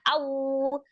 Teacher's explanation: Ro'au waw sukun sebelumnya fathah di huruf alif ya, hukumnya adalah harfulin, dibaca pendek tapi disempurnakan waw sukunnya dengan memajukan kedua bibirnya